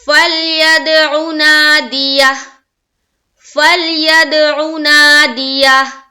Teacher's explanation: عین کی آواز واضح نکل رہی ہے پیش کی حرکت کے ساتھ. نا میں الف مدہ کرنا ضروری ہے، اور یہ جب کریں گے تو ہا واضح طور پر نکلنی چاہیے. · فا کو جب ہم لام سے ملا رہے ہیں ہماری آواز رک جا رہی ہے، اور دال سے ملا رہے ہیں تو قلقلہ ہو رہی ہے. عین کی آواز واضح نکل رہی ہے پیش کی حرکت کے ساتھ.